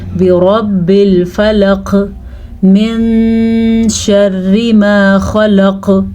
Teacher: خلق پہ ایک دفعہ پھر سے قلقلہ ہوگا